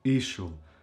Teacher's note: There are also some exceptions where words are pronounced on the first syllable, like for example, ishul. Ishul means isle or island in Albanian, and the first syllable is stressed. Ishul. This is because when a noun ends in ul, this syllable is never pronounced.